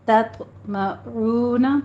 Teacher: تو پر قلقلہ کرنا ہے، اس کو پر بھی پڑھنا ہے